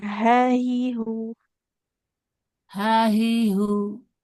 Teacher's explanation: yang ha dipangkal tenggorokan